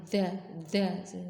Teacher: ujung lidah kan menyentuh ujung gigi seri atas. Nah, itu dilonggarkan jangan sampai eee ditekan ya, dza dza. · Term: huruf za